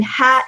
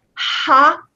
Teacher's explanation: it's very light, but ha, a lot of air comes out